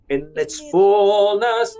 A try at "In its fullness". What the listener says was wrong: No, you have to make it short. In its fullness. Fullness kan panjang, betul nggak? Nah, waktu panjang make it legato sedikit fine. Yang pendek make it bouncing. Tetapi yang panjang itu mau dikasih semacam kayak legato, buat saya itu akan menarik.